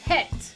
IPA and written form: hɛt (het)